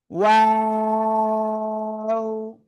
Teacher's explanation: দুই ঠোঁট শুরুতে গোল হবে, মাঝখানে দুই দিকে প্রসারিত হবে। খেয়াল করতে হবে আমার কথা, এবং শেষে এসে আবার গোল হবে দুই ঠোঁট।